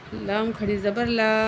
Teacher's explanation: تو یہ اللہ کی لام جو ہے اس کے اوپر کھڑی زبر ہے، ایک الف کے برابر کھینچ کے پڑھیں گے اس کو اور اللہ کو باریک کر کے پڑھیں گے، ٹھیک ہے۔